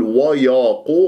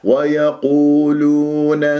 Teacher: ويا مرقق، حتى لا تسويها مفخم لمجاورتها للقاف المفخم مرتبة ثالثة